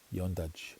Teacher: And then it runs into this Y on the front. So when that D and that Y run into each other, now you're going to get that J sound.